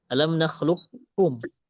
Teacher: Huruf kaf di sini. Jadi kita bacanya langsung alam nakhluqkum, langsung ke huruf kaf. Itu idgham kamil namanya.